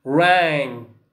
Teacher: Remember without ge. So we say ringing without ge. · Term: Ng sound